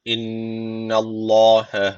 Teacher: Allah lafzı kalın okunacak çünkü öncesi harf üstten bağlanmış.